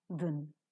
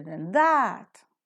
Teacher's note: Than is always reduced to its weak form, than. This is better than that.